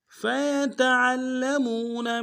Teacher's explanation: عین کو موٹا ادا کرتے ہوئے لام کے ساتھ ملانا ہے، لام کے اوپر تشدید زور دیں گے · فَيَتَعَلَّمُونَ میں فا کو یا کو اور تا یہ تینوں کو نرم سے ادا کریں گے